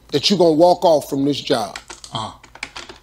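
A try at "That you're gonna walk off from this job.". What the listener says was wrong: 여기서 발음 좀 굉장히 빠르가지고 that you gonna 거의 아까 r 이것도 발음이 거의 안 하신 것 같아요. 근데 거의 you gonna 이렇게 발음했어요. 근데 you are gonna겠죠 원래는.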